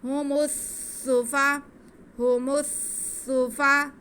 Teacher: میم کے پیش کو ہم سین کے ساتھ ملائیں گے کیونکہ سین مشدد ہے. هم السفا، هم السفا، فا پہ زبر ہے، ہا پہ بھی زبر ہے.